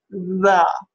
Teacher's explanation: Our next sound is the voiced dental fricative, but it can also be produced interdentally as in with that tongue sort of sticking out between the teeth.